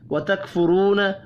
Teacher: را کو پیش کی وجہ سے پر پڑھیں گے، واو مدہ ایک الف کے برابر کھینچ کر پڑھی جائے گی.